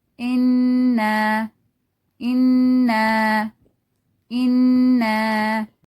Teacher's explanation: For Gunna sounds with Tanween or Shadda, Mim and Noon. The sound resonates in the nose.